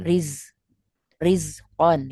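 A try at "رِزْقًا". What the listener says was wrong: Hilangkan anginnya, bukan riz. Rizkon. Ya, jangan sampai ya.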